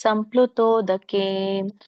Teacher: ದೀರ್ಘ ಇರೋದ್ರಿಂದ ತೋ ಮತ್ತೆ ಕೆ ಎಳಿಬೇಕು